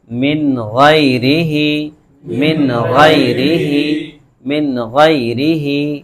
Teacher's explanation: یہ جو تنوین ہے اور نون ساکن ہے اس کو بالکل ظاہر کر کر پڑھیں گے، اس میں ذرا بھی غنہ نہیں کریں گے، ذرا بھی کوئی چینجز نہیں کریں گے. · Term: اظہار